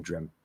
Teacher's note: It would just be M to T, but because of the M there, if you're not like super enunciating, the P will kind of come out as we release the M. Dreamt. They're not supposed to be a P there.